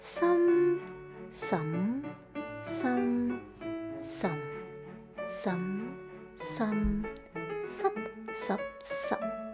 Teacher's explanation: the tones of numbers 7, 8, and 9 share the same melodies as the tones of numbers 1, 3, and 6, but with a quick ending. They are called entering tones.